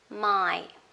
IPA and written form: maɪ (my)